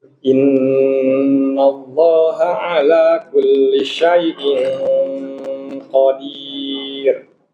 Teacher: Syai'in itu ikhfanya tafkhimnya tebal.